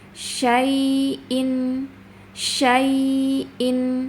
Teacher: Ya-nya harus dirokhwa dialirkan, tapi ada tekanan yang lembut ya. Dan harus ditegakkan, jangan digantung bacanya. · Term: ya sukun